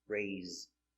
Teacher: The S is between two vowels, so we pronounce it with a Z sound like zebra.